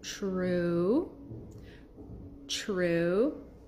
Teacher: TR will make a CH sound